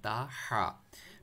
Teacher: हा को मिडिल थोड़ा सा अपने पढ़ना है, ता हा। मिडिल थ्रोट से आपने पढ़ना है।